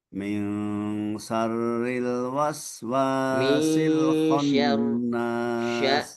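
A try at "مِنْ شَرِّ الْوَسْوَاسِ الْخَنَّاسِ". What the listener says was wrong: Sya-nya kurang lebar, desisnya kurang tersebar, ya. Sya-nya itu harusnya angin yang ketika kita membaca huruf sya itu keluar dari berbagai arah. Ya, depan, samping itu huruf sya. Semuanya keluar angin, desisnya keluarnya tersebar kemana-mana.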